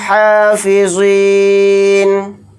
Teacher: نون کو ساکن بنا کر پڑھیں گے حالت وقف میں